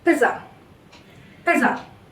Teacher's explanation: So can you see I am not giving any stress on this last A. It is simply pizza. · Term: schwa sound